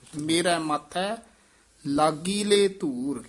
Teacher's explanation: ਲਾਗੀਲੇ ਲੰਮੀ ਆਵਾਜ਼ ਨਾਲ ਸੰਬੰਧਕ ਪਾਠ ਕਰਨਾ ਹੈ